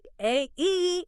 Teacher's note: the a sound in day isn't just one vowel. It's a slide from a to e. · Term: glide